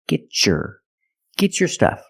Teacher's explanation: If I separate, I can say get your stuff. But because I have a T before a Y making the Y sound, I can change the T to a ch sound like chicken and say get your stuff.